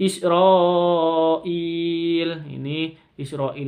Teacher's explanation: jadi ada Mad bertemu dengan Hamzah di satu kata mad wajib muttasil panjangnya 5 sampai 6